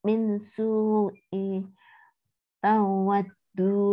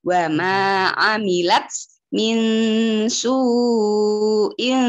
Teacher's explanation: Wa ma amilat min su'in, bukan i tapi in, soalnya ketemu tak.